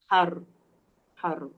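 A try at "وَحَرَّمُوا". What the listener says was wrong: har dia jangan muncung bibir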